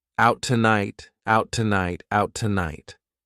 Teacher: I can use that T from tonight for both words if I say them together